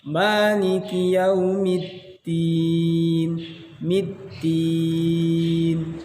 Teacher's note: middin, mimnya kasrah, maka pengucapan mimnya bibir kita ditarik.